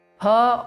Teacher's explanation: some people tend to pronounce this pa as fa. It is not fa as in fruit of English. It is pa of phal.